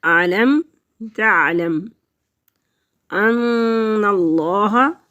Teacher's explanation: میم ساکن ہے، پیچھے ملے گی اور ایک ہی دفعہ پڑھی جائے گی۔ علم تا عین حروف حلقی میں سے ہے، تعلم تو حلق کے وسط میں سے ادا ہوگا۔